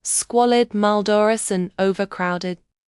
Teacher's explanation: The hissing s and z sounds create an unpleasant queasy texture. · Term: sibilance